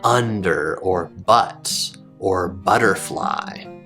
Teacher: your tongue will be low and toward the back of your mouth, just like with the ah sound, but it won't be quite as far back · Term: short U sound